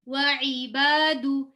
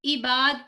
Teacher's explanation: عین کا مخرج حلق, مڈل آف دا تھروٹ, حلق